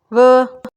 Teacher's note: the lower lip touches the upper teeth, but with the addition of vocal cord vibration, producing a voiced sound.